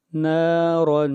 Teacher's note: را کے اوپر 2 زبریں آئی ہیں اور را کو موٹا پڑھیں گے. نارا یہاں پر اخفا ہوگا اس لیے کہ تنوین کے بعد حروف حلقی میں سے کوئی حرف نہیں ہے.